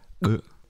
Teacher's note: Its like pronouncing the letter K, without using your lungs so its just using the air pressure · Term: gag